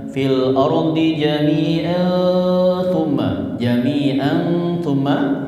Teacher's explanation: Huruf ta ya. Maka berlaku hukum ikhfa hakiki samar-samar gunnah.